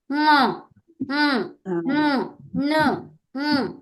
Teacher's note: కావు ఎందుకంటే ఇవి ముఖస్థితం కాదు ముఖం అంటే ఏంటి మౌత్ నుంచి రావాలి ఇవి మౌత్ నుంచి రావు జస్ట్ ముక్కు నుంచే వస్తాయి అన్నమాట ఉమ్ ను అలా వస్తది అన్నమాట సో అట్లా చదవాలి అవన్నీ ముఖం ముక్కు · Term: నాసిక స్థాన వర్ణాలు